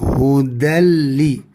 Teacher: Hukumnya adalah idgham bila gunnah. Maka tidak berlaku dengung di sini ya.